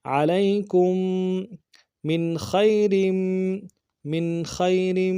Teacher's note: عین کو موٹا ادا کریں گے، لام کو یا کے ساتھ ملانا ہے، یا لین بغیر کھینچے پڑیں گے ، کاف کو میم ساکن کے ساتھ ملانا ہے، میم ساکن